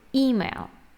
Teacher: Don't forget that the stress is on the first syllable